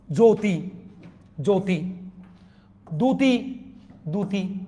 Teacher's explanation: শব্দের প্রথমে জফলার সাথে রস্বউ দীর্ঘউ ও থাকলে জফলা উচ্চারিত হয় না।